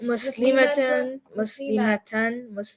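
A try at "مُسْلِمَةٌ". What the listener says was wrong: See, the ma was too long?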